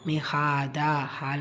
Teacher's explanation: அலிஃப் சகிரா வந்திருக்கு இரண்டு ஹரக்கத் நீட்டம் கொடுத்து ஓதணும்